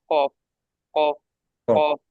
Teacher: কফটা হচ্ছে মানে কাঁসার মতো টাং টাং আওয়াজ হবে